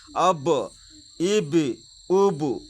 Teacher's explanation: حروف قلقلہ 5 ہیں: قاف تا با جیم دال، جس کا مجموعہ قطب و جدن ہے۔ جب ان پر جزم ہو تو ان کو پڑھتے وقت ان کے مخرج ٹکرا کر الگ ہو جاتے ہیں